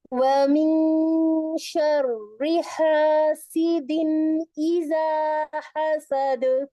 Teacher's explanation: ایزا پر ہم 2 کاؤنٹ کریں گے. اس کے بعد ایک ایک ایک حرکت کے ساتھ دال کو کلکلا کے ساتھ کمپلیٹ کر لیں گے